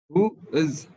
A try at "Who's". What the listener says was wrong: لكن من نطقها على بعض إيه؟ Who's. Who's. قولها على بعضها بقى Who's، واختار كلمة من تحت.